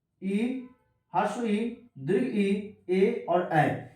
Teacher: इ हर्ष ई दीर्घ ई ए और ऐ ये चार ऐसे स्वर वर्ण है जो अग्र भाग से बोला जाता है